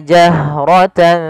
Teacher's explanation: alirkan nafas pada lafal ha karena dia punya sifat namanya hamas, mengalirnya nafas